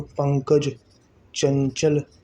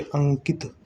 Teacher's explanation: इनके उच्चारण में नाक से अधिक और मुंह से कम श्वास निकलती है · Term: अनुस्वार